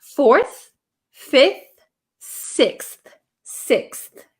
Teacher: I wouldn't use an F sound here this should be a th sound